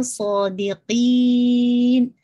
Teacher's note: صاد پورا full of mouth کے ساتھ، ہیوینس اس کے اندر. آپ اپنی جو روٹ آف دا ٹنگ ہے اس کو اوپر کی طرف اٹھائیں گے تو سو کی آواز نکل جائے گی.